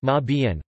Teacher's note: As umschreiben separable prefix, it means to rewrite and is pronounced ma bien, with stress on the first syllable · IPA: [ˈʔʊmʃʀaɪ̯bən]